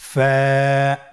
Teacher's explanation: ফা হরফটি উচ্চারণের ক্ষেত্রে বারিক হবে এবং এক আলিফ টেনে পড়তে হবে।